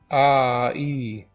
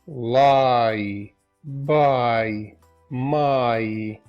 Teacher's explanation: Diphthongs are really two vowels together. So the first one sounds like a ah with an E. Ah, E. Something like lie, buy, my.